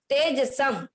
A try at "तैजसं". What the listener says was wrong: तेजसम नहीं, तेजसम, दो है, दो पाई है ऊपर, तेजसम, तेजसम नहीं, तेजसम, ठीक है।